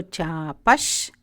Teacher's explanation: Chapash, chapaha visargaha becomes shakara.